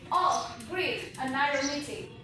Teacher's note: exaggerated pitch contours, stretched syllables